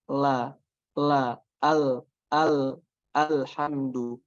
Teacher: Sedangkan lam itu dari sisi lidah sampai ke ujung lidah itu kena semuanya ke langit-langit.